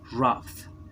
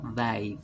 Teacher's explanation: Vemos cómo queda ahí ese sufijo ed como solo un sonido de una D de dedo.